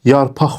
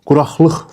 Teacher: Quraqlıq formasında. Yəni q samiti x kimi tələffüz olundu bu sözlərdə.